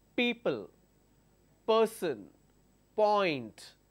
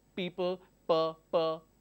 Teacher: I am closing both my lips in order to produce the sound which is per sound